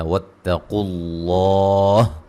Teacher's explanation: قاف کو موٹا ادا کریں گے, لفظ اللہ کو خوب موٹا ادا کریں گے, اس سے پہلے حرف پر پیش ہے اور یہ مد اصلی ہے, اور مد یعنی کہ کھڑی زبر الف مدہ کا قائم مقام ہوتی ہے.